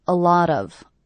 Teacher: I hear these 3 words as one unit. A lot of, with the stress happening on the middle word.